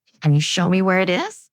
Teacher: stress show and is.